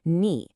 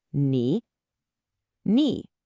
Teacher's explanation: It has what we call a third tone, which means your voice has to fall and then rise.